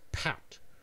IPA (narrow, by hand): pʰæt